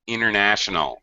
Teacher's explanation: Well, there the T kind of disappears.